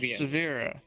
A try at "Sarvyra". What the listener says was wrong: There's an R after the A. Sorry.